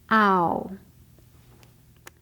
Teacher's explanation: You noticed that ow began with a wide open shape.